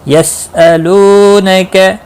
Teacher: لو واو مدہ ہے، ایک الف کے برابر کھینچ کر پڑھیں گے، باقی کسی بھی حرکت والے حرف کو کھینچنا نہیں۔